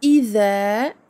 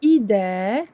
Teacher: Le dhal doit faire intervenir le bout de la langue entre les dents, alors que pour le del, le bout de la langue se pose sur le palais, à l'intérieur, à la limite des dents, mais à l'intérieur de la bouche.